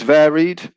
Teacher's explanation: if we use varied then the stress will stay on the first syllable